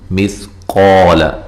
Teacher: سا کو نرم ادا کرنا، قاف کو موٹا اور یہ قا الف مدہ ہے، لام کو لمبا نہیں کرنا.